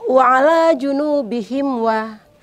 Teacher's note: mim mati bertemu dengan waw itu tidak berdengung, itu hukum bacaannya izhar syafawi.